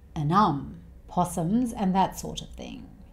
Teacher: He changes 'and' to 'ən', and then he joins this with the 'um' sound